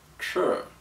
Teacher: it's pronounced in the flat first tone which is in your upper register and it's just a monotone word